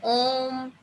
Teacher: अब जैसे आप मेरे साथ बोल के देखिए ओम, अब ओम बोला मैंने, और एक मैंने बोला ओम, तो ओम तो नहीं बोलते ना, हम बोलते हैं ओम। ओ को हम थोड़ा लंबा लेते हैं ना, यानी 3 मात्राओं का समय हम इसमें लेते हैं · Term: प्लुप्त स्वर